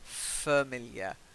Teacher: we've got that fa, which is the schwa